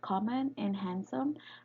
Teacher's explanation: words such as common and handsome carry the stress on the penultimate position because the syllable in the ultimate position becomes light syllable after